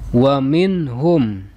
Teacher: Wa minhum. Minhum ini nama hukumnya adalah idhar halqi, sebab nun sukun bertemu dengan huruf halak yaitu ha.